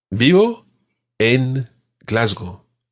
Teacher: In Spain, it's pronounced a sort of combination between a B and a V, and it sounds something like "rrr." Try that.